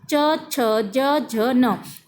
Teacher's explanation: जुबान हमेशा तालु को टच होती है, तभी जाकर हम इन वर्णों का उच्चारण कर पाते हैं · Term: तालव्य